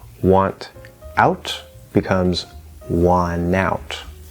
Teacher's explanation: you drop the T. Okay, no T, and the N will then connect to the vowel instead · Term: NT plus vowel rule